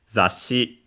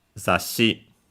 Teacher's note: Okay, let's see some words with now we can see uh this word that we have already have here zashi as you can see uh low high high no fall after the last one. So actually an unacented word.